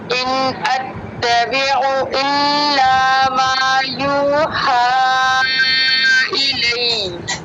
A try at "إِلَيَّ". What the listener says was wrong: इलई आवाज़ को उठाना जब तशदीद आनी ना लास्ट पे, इलई थोड़ा सा उठा दे, इलई जस्ट या को, और अत्तबिउ इल्ला हमज़ा और आइन में फ़र्क नहीं था, अत्तबिउ ई अत्तबिउ इल्ला।